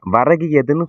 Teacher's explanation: கு என்பது ஒரு மாத்திரை கி அப்படி சொல்லும் பொழுது ஒரு மாத்திரையிலிருந்து அரை மாத்திரையா ஒலிக்குது இல்லையா இதுதான் குற்றியல் இகரம் அதாவது கி ஈ அந்த ஈ ன்னு அந்த